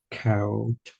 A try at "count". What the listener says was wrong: Count. Don't forget your N. Yeah, so you can see how commonly you're leaving out your N.